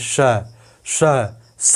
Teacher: जब बोलेंगे तो आपको ज़्यादा प्राणवायु सीटी निकाल करके बोलनी पड़ रही है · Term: महाप्राण